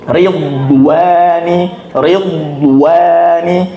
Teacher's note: D itu sejak awal dia masuk harus sudah tebal dan ketika keluar dari D tetap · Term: huruf Dad